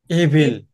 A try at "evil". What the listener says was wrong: হ্যাঁ, এভিল আমরা বলি। উচ্চারণটা ইভিল।